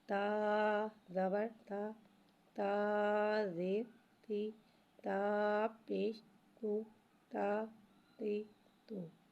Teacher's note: تا کو ایک الف یعنی 2 حرکات کے برابر کھینچ کے پڑھیں گے